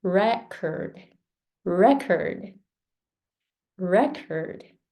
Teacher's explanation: It's a noun. Re is stronger than curd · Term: stressed syllables